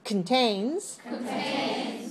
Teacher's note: Vari okay look look at me don't say contain say contains contain very small first syllable very weak